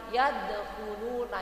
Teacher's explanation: Jadi harus ada qalqalahnya dulu dikit karena itu qalqalah sughra ya Bu ya